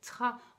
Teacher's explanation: la langue, en fait, il faut qu'elle s'avance devant et qu'après, elle vienne se reculer pour faire le r. Et donc là, c'est très compliqué pour l'enfant parce que ce sont deux sons qui sont très rapprochés.